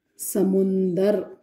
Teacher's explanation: इसमें क्या हुआ, द आधा था वो पूरा हो गया, यहां पर र पूरा है, र पूरा पहले भी था, और न, समुद्र में कहीं अनुनासिकता नहीं है, आधा न का आगम हुआ है इसमें